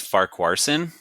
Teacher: The name Farquharson is a Scottish surname that is generally pronounced Farquharson, with the stress on the first syllable. You can break it down as far, like the English word far, then k, a soft short a sound, and finally sun, like the word sun.